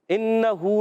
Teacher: نون مشدد ایک الف کا غنہ کریں گے